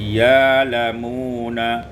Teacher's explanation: ibdalul hamzati alifan, ditukar hamzah dengan alif menjadi ya lamuna.